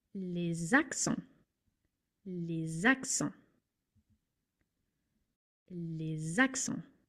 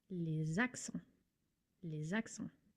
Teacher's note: You transfer the S to the following word and it's a Z sound, or as if it was one word. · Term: liaison